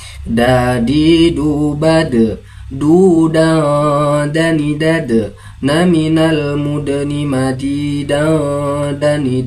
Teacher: makharijul hurufnya berada di ujung lidah bertemu dengan pangkal gigi seri bagian atas. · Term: huruf dal